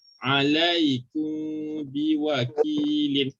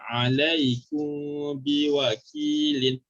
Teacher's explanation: mim sukun tu kita akan sembunyikan. So macam mana kita nak sembunyikan bunyi mim tu? Jangan sebut mim mati tepat pada makhraj. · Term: ikhfa syafawi